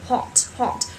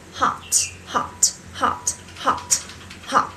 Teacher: Còn anh Mỹ thì thông thường nó sẽ thành chữ A, đúng không ạ? Miệng của chúng ta hơi hơi gằn xuống thành chữ A trong cổ họng. Các bạn sẽ đọc là hot, hot, hot, hot, hot.